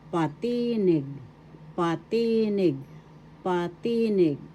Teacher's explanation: same word patinig First syllable second syllable t third syllable nig the accent is in the second syllable